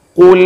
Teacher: Monyongnya karena ada dhammah di sini, bukan monyong gara-gara tebal qaf, bukan. Tetapi karena ada dhammah di atas huruf qaf.